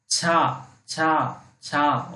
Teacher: आपका जो तलवा है, तालू है, यहां से ध्वनि उत्पन्न हो रही है